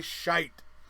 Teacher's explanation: you almost try to remove the T sound but when you say shite that T comes ringing out like a church bell